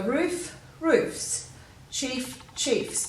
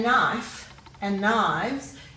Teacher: you can hear the f is retained